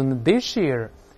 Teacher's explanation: 咱们读▁this▁year，▁要把▁s▁变成▁sh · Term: 变成▁sh▁这个声音